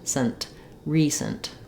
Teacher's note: in recent, it's almost like I don't say that vowel in the second syllable at all. It's going to be a little I sound or a schwa sound, but just try to go quickly from your s to your nt, sent, recent.